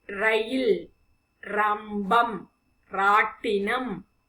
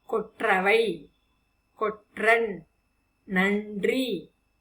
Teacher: இடைநரா உச்சரிக்கும் பொழுது நாவானது அன்பல் அருகில் இருக்கும். அதே சமயம் நம்முடைய வல்லினரா உச்சரிக்கும் பொழுது நாவானது நடுப்பகுதியை தொடும் என்பதை நினைவில் கொள்ளுங்கள். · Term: இடைநரா வல்லினரா